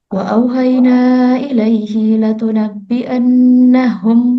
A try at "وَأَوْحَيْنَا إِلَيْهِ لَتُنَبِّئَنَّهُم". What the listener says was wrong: Di kata ilaihinya tadi kedengaran agak panjang ya. Wa auhayna ilaihi latunabbi'an. Jadi jangan ilaihi latu.